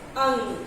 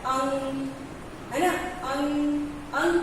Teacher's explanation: अनुस्वार का जब हम उच्चारण करते हैं अंग, तो हमारा जो श्वसन क्रिया है वो सिर्फ नाक से निकलता है।